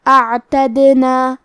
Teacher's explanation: کلمت اعتدنا میں حرف دال پہ جزم ہے، لہذا ہمیں دال کو قلقلہ سے پڑھنا ہے، اور قلقلہ کا معنی ہے حرف ساکن کو ہلانا، تو ہم حرف دال کو ہلاتے ہوئے یہ کلمہ کو پڑھیں گے